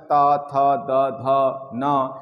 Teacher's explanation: जब हम उच्चारण करते हैं तो जीवा जाकर के दांत से टकराती है